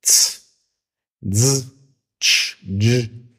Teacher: die Affrikaten, wo halt zwei Laute hintereinander eine Einheit bilden